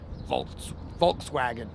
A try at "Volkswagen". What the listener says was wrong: So it's more of an F than a V. Yeah, so V's in German are actually F's. It's a little V.